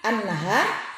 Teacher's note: Cara membacanya alif lam wajib diidghamkan atau dimasukkan ke dalam huruf nun. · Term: alif lam samsiyah